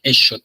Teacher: La X la vamos a utilizar para hacer una fricativa alveolar sorda, o sea, una sha, más o menos como si estuviéramos queriendo callar a alguien.